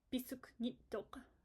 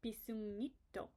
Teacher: So we're just going to drop the K if we're adding ngit, because ngit has to come after a vowel.